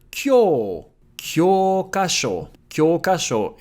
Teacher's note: an /o/ sound followed by う makes it longer